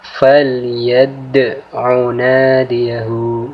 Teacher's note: Dal mati di sini kita baca dengan cara menekan, kemudian sedikit memantul, sehingga dal mati di sini sangat jelas dibacanya. · Huruf dal mati di sini kita baca dengan cara memantul, tapi dengan pantulan tipis, karena ini adalah hukum bacaan qalqalah sughra.